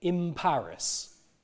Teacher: usually the nasal before the p will come out more like a m, "in Paris," rather than a n, because it's close to that other sound, which is a bilabial sound.